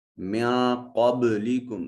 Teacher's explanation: جب یہ نون ساکن یا نون تنوین کے بعد کہیں آ جائیں تو اس وقت نون کو اپنے مخرج میں چھپا کر ادا کرتے ہیں. قاف ویسے حرف مستعلیہ ہے، اس کو مفخم ادا کرتے ہیں، موٹا اور پر کر کے پڑھتے ہیں. با ساکن ہے، قلقلہ واجب ہوگا. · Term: حرف اخفا